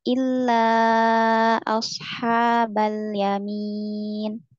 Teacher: Diulangi dari illa, illanya 4 sampai 5 harakat ya